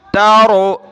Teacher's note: را کو موٹا کر رہا ہوں میں